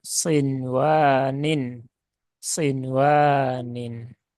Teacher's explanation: di sini ya nun sukun bertemu dengan wau nah ini ya nun sukun bertemu wau itu dibaca dengan izhar ya Bukan dibaca dengan Idam karena di situ terjadi di dalam satu kata yang sama yaitu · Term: izhar mutlak